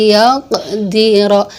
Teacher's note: Iya-nya seakan-akan bertasydid, sekalipun penulisannya tidak ada dituliskan tasydid, tapi dalam membacanya seakan huruf ya-nya bertasydid. Jadi layaqdiro, ditahan 1 alif 2 harokat dan didengung. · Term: idgham